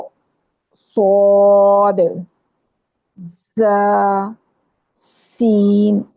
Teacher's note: زبان کی نوک کو اوپر نیچے کے جو سامنے والے اوپر نیچے کے دانت ہیں ان کے اندرونی کنارے کے قریب کرتے ہیں زبان کی نوک کو، تو پھر یہ ادا ہوتے ہیں.